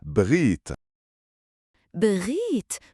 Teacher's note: Le r est comme le r français, mais un peu plus au fond de la gorge.